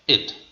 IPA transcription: ɪd